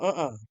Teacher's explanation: emphasis on the first syllable means no. Nope, not at all.